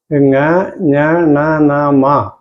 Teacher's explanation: ഇവ മൂക്കിൻ്റെ കൂടെ, നാസികയുടെ കൂടെ ബന്ധം വരുമ്പോഴാണ് ഉച്ചരിക്കപ്പെടുന്നത്.